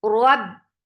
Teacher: For fatha, open your jaws, attach it ba. Ba has shidda. The sound will be cut off very sharply. Rab, no flow of sound at all.